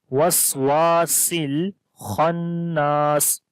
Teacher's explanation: شر الوسواسل، سین کو لام کے ساتھ ملائیں گے